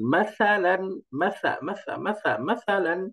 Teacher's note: উচ্চারণটা নরম করে খেয়াল করেন মাসাল মাসা করলে কিন্তু হবে না উচ্চারণটা জিহ্বার আগা উপরের দাঁতের আগার সাথে লাগিয়ে একদম নরম উচ্চারণ